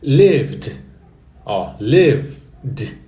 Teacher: No simple past, dá uma olhadinha ali, no vermelhinho, ó. É como se você falasse o live e colocasse um D de dado mudo no final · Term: D mudo